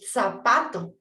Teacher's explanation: La punta de la lengua se coloca entre los incisivos superiores e inferiores.